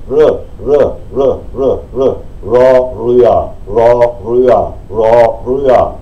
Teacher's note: Das thailändische R, da vibriert hier nichts, sondern eher wie ein R, R, also hier vibriert nichts, und dann mit der Zunge.